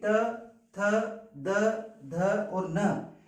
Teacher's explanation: इनका उच्चारण करते समय हमारी जीभ जो है वो दांतों का स्पर्श करती है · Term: दंत्य व्यंजन